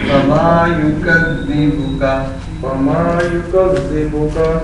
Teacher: یہ زے کی سیٹی نہیں آنی چاہیے، یہ زال ہے، زے نہیں